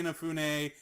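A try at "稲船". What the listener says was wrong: Inafune. Inafune. You're putting like stress in weird places. Inafune.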